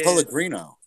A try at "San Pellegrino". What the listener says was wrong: The San Pellegrino. You got to pronounce the whole thing, or else it's not fancy.